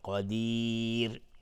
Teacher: قدیر را اینجا ترقیق است چون قبلش یا اومده. را حکمش ترقیق است چون قبلش یا اومده